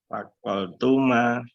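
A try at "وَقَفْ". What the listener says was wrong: Kof loh, bukan kol. Kof bukan kol.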